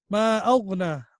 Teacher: Then also in the second verse, again there is a madde munfasil. Ma aghna, ma has to be stretched also for 4 alif long